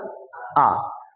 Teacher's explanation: पूरा मुंह खोलना है, जीभ को दबा लेना है नीचे की ओर, उठने नहीं देना है उसको, और मुंह खोल लेना है।